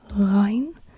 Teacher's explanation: it's a throat R not a rolled R but a throat r